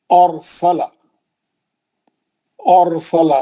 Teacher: रा साकिन है लेकिन उससे पहले वाले हर्फ पे जबर है, इसीलिए उसको मोटा पड़ रहा है ना।